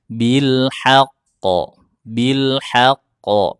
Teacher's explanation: Huruf qafnya kan bertasydid, ditahan lalu dipantulkan. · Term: huruf qalqalah